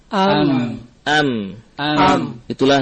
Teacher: Ada suara yang mengalir ke rongga hidung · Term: ghunah